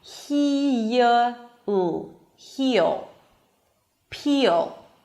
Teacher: If there is a high E sound before the dark L, you hear a Y sound right before the L.